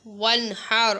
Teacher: واو نون زبر ون، ہا را زبر حر، ون حر. اب یہاں پر نون کے اوپر غنہ نہیں ہوگا کیونکہ اس کے بعد حروف حلقی میں سے ہا آ رہا ہے، اور ہا سے پہلے والے حرف پر غنہ نہیں کیا جاتا.